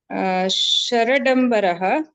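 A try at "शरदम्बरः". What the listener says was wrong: The way you pronounce, there was no duplication. Sharad Dambaraha, we have to say. You have to give that attack release pause. See, when we alone pronounce the duplicant, we cannot pronounce it because attack and release is possible only with neighborhood pronunciation. So Sharat Dambaraha has the attack release possibility. Just d, very difficult to attack and release. I mean, you can't.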